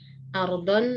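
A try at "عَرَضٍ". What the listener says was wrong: Bi aradin ya, dibacanya arad. Bukan arad, tapi bukan dengan memfathahkan ain dan ra, bukan mensukunkan ra. Bukan bi ardin, tapi bi aradin. Bi aradin minad dunya.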